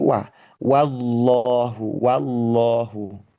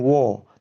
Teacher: Nah, lagi bahwa meskipun lafaz jalalahnya itu memang tebal, Tetapi huruf wawu fathahnya sendiri ketika diucapkan itu tidak ikut-ikutan tebal justru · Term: wah fathah